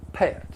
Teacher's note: in the South, it's common to create diphthongs with the short vowel sounds a, and I. And you're going to follow it with an off-glide schwa sound.